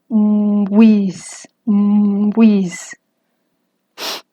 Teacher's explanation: No es bis, no, se tiene que redondear los labios como con la U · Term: nasal labializada